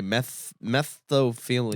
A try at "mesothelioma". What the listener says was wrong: No, you're saying it with a lisp. It's the order of S to TH that really fucks your tongue up.